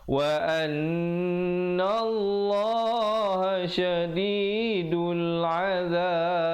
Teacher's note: diberikan pantulan qalqalah kubra pada akhirnya. Ba itu diberikan tanda sukun mendatang ataupun mati mendatang.